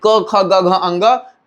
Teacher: ये जो हमारा क वर्ग है इसका उच्चारण कंठ से होता है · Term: स्पर्श व्यंजन